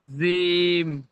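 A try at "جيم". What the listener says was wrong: জিম। জিম, এটা চেপে উচ্চারণ হবে, জিম। আপনি মানে জিভের আগা থেকে বলছেন, জিম এমন ভাবে বলছেন, ওটা জিভের পিছখান থেকে হবে, জিম।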